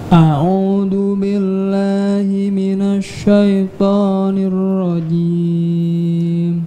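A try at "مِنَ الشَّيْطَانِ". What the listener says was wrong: Sya-nya tipiskan ya. Jangan minasy, tapi minasy.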